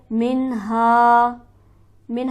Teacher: मिन्हा के नून पर हम गुन्ना नहीं करेंगे क्योंकि इसके बाद हरफ हल्की मौजूद है। हा पर हमारे पास हरफ मद्दा मौजूद है तो लिहाजा इसे हम एक अलिफ के बराबर खींच कर पढ़ेंगे।